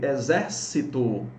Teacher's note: Nós temos aqui uma proparoxítona, tonicidade na antepenúltima sílaba.